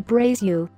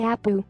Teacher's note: how this person pronounces the letter L when used in words the majority of Brazilians pronounce you instead of L for example Brazil they say braised you Apple they say Abu